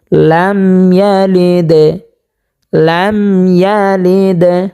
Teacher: তো প্রিয় দর্শক, আমরা হরকত জের হরকতের বামে দাল পেয়েছি এবং দালের উপরে জজম পেয়েছি, সে কারণে এখানে দালকে কলকলা করিয়া ধাক্কা দিয়ে পড়তে হবে